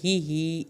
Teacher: ہا کی زیر کو لمبا نہیں کرنا، ہی کھڑی زیر کی وجہ سے لمبا ہوگا